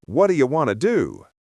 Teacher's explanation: What do you becomes what'ya. The hard T in what softens to a duh sound. The O in do and in you are reduced to a quick, unstressed sound.